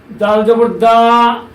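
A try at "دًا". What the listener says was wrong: দাল উপর ডাবল জবর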